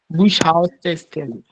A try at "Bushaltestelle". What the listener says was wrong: Bush. It's Bus.